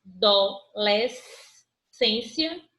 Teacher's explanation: ela é polissílaba porque ela tem mais de três sílabas e ela é paroxítona porque a penúltima sílaba dela é mais forte pronunciada com mais intensidade